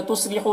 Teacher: تصلحو، صاد کو پر پڑھنا ہے، خو میں واو مدہ ہے، اسے ایک الف کے برابر کھینچ کر پڑھیں گے۔